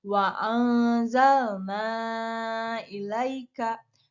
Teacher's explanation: Cara membacanya itu adalah dibaca panjang 5 harokat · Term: mad jaiz munfasil